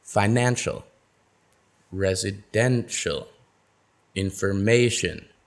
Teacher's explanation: notice how the syllable stress falls right in front of the suffix